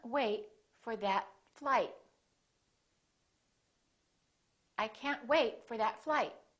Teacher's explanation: hold the final stop by either holding your tongue for the t or the d